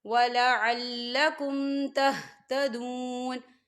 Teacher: واو ساکن ہے اور واو ساکن سے پہلے پیش ہے، تو یہاں پر واو مدہ ہو رہا ہے، تو ہم اسے 2 حرکت کے برابر کھینچیں گے۔